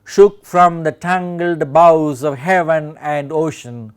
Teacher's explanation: one more rare instance of an iambic hexameter, that is we have 12 syllables in this line